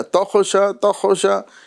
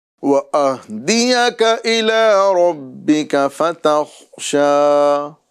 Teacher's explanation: خاء کے اندر قلقلہ نہیں کرنا ہے، خاء کو ساکن کرنا ہے